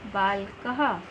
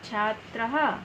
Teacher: विसर्ग के साथ ह की आवाज़ निकलेगी।